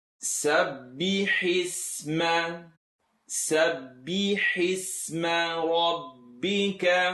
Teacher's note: I want the hi sound from the throat.